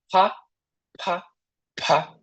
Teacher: Então, ao invés de fa, no coreano você falaria pa, pa, pa, um som do P com bastante ar, um som do P aspirado.